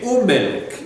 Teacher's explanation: And so what Hebrew does to take away the awkwardness is when you have a labial, when you have a sound coming off of the lips, the be, the pe, the mem. Okay, when you have a sound coming off of the lips, this becomes an oo